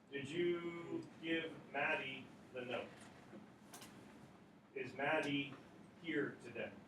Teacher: The second part of the name, I think you elongate just a little bit. You put a little bit more emphasis.